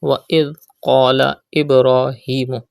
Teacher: Pronounce dal without whistle sound and pronounce qaf with thicker voice because qaf is a mustaliya letter. Do qalqala in ba because ba is a qalqala letter.